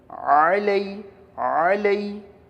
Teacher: عین وسط حلق سے نکالیے